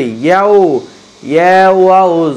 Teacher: ওয়াও যখন উচ্চারণ করবেন ঠোঁট গোল হয়ে যাবে।